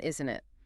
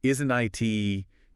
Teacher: A tag question with a falling intonation where your voice drops slightly at the end